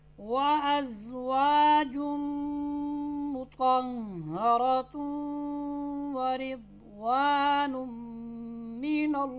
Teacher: ठीक है, तो यहाँ इदगाम बिल गुन्ना होगा। नून तनवीन को मीम के साथ और वाव के साथ मिलाएंगे और गुन्ना भी होगा।